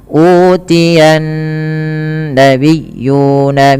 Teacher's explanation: Alif lam syamsiyah yang dimana alifnya ya, alif lam syamsiyah adalah alif lam yang terjadi ketika bertemu dengan huruf-huruf syamsiyah yang dimana nun huruf syamsiyah, dan nun sendiri juga ada bacaan gunnah, maka ia ditahan sepanjang 2 harokat ketika membaca nya